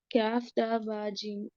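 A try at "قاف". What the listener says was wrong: Qaf, not kaf. Qaf, qaf എന്ന് പറയണം കേട്ടോ. കാഫ് വേറെ ലെറ്റർ അല്ലേ?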